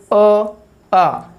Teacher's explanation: अपने 2 स्वर है अ और आ, जिनका उच्चारण स्थान कहाँ से है, कंठ से। आप इनका उच्चारण करके भी देख सकते हो, अ आ जो ध्वनि है वो कहाँ से आएगी, आपके कंठ से, यानी आपके गले से सीधी निकलेगी।